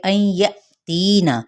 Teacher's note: حمزہ ساکنہ پہ جھٹکا دیں گے یا کر کے۔ تینا، تی پہ مد اصلی بالیا کا قاعدہ، نون کی حرکت کو لمبا نہیں کیا جائے گا۔